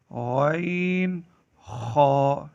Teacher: غین، خا حلق کے اوپر والے حصے سے ادا ہوتے ہیں۔